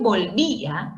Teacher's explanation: el acento recae en la cerrada y no en la abierta y se tilda por ser tilde robúrica o disolvente.